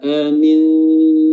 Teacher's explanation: Dan di sini ada nun sukun yang bertemu dengan huruf ta, hukumnya adalah ikhfa atau samar-samar, di mana kita menyamarkan nun dengan meletakkan lidah pada makhraj huruf ta